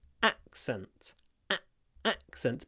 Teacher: this stress is on the first syllable accent accent but the a it's clipped because it comes before